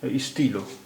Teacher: ফরাসি ভাষায় টা হয় না, তা হয়।